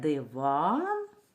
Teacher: у цьому слові наголошений склад другий